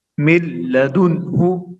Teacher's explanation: دیکھو نون کو لام بنا کر دونوں لام کو ایک کر دیا. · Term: ادغام